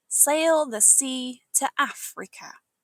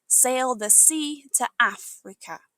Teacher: This phrase has a great rhythm. We stress the words sea and the af to make it musical, like a marching chant.